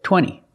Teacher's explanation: You have NT in the middle, the T is silent.